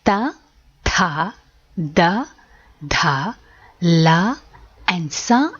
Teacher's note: alphabets are formed with the help of the teeth and hence they are called Dantya varnagalu